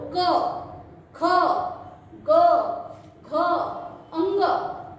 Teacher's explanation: देखो, यहाँ पर हाथ रखकर बोलो क, ख, ग, घ, अंग। ये सारे वर्ण हमारे कंठ से आते हैं, इसलिए हम इसे कंठ वर्ण कहते हैं।